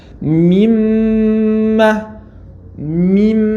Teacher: Над мимом стоит таштит. Что мы делаем? Задерживаемся тут. Делаем назализацию.